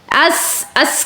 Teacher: تو سین میں سیٹی کی آواز ہوگی. حمزہ زبر سین اس، حمزہ زبر سین اس، اس، اس کہتے ہوئے آپ نے سیٹی کی آواز کو نمایاں کرنا ہے.